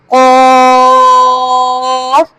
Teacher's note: قاف، حرف لہاویہ، ان حروف کو حروف لہاویہ کہا جاتا ہے۔ قاف زبان کی جڑ اور تالو کے نرم حصے سے ادا ہوتا ہے۔